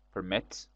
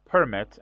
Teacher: Permit with stress on second syllable is the verb permit, and permit with the stress on the first syllable is a noun. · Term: stress pattern